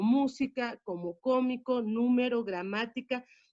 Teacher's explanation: En el caso de las esdrújulas es más sencilla la ubicación porque es la antepenúltima y es la posición 3 y siempre, siempre las esdrújulas llevarán acento en palabras como música, como cómico, número, gramática.